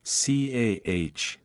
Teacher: British RP accent. The R sound is often silent when it appears at the end of a word, non-rhotic. For example, car is pronounced like CAH.